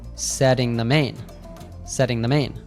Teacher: setting has a different T called the tap T. It actually sounds like a soft D sound.